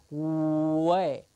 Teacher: is the written w an approximant or a semi vowel because there is really no obstruction when we say the W way the only thing that's happening is the lips are going · the only thing that's happening is the lips are going forward, becoming kind of around to say w